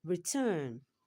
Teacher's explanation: Here return here is a verb and the stress is on the second syllable